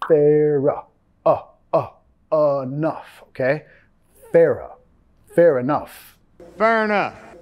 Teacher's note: Recuerda que vas a vincular al sonido schwa acá.